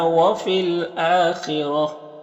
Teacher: یا میں الف مدہ ہے، اور فی الآخرتی یہاں پر یا کو نہیں پڑھیں گے، اور یہاں پر الف لام حروف قمری حمزہ کے شروع میں ہے تو لام کو پڑھیں گے، الف کو نہیں پڑھیں گے۔ حمزہ میں کھڑا زبر جو الف مدہ کی طرح ہوتا ہے، اور خا حروف مستعلیہ میں سے ہے تو پر پڑھیں گے، را کو پر زبر ہے، را کو بھی پر پڑھیں گے۔